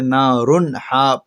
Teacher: را کے اوپر دو پیش کی تنوین ہے، دو پیش کی تنوین کے بعد حروف حلقی کے 6 حروف میں سے ہا آیا ہے، اس وجہ سے نارن ہا پڑھ رہے ہیں۔ نارن ہا اس طرح غنہ نہیں کریں گے، بغیر غنہ کے جلدی پڑھا جا رہا ہے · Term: اظہار